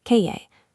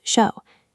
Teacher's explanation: In Buenos Aires, both the double L and the letter Y are pronounced with an aggressive SH sound. "Calle" becomes "kashe".